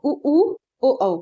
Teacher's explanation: मुंह अपने आप गोलाकार हो रहा है। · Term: वृत्त मुखी